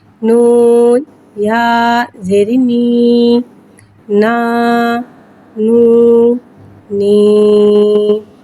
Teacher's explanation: یا ساکن سے پہلے زیر آ رہا ہے، یا مدہ ہو رہا ہے، لہذا یا مدہ کو ایک الف یعنی 2 حرکات کے برابر کھینچ کے پڑھیں گے اور زیر کو نیچے گراتے ہوئے ادا کریں گے۔